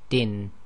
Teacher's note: the hidden n sakin that is not pronounced when one stops but is pronounced if one continues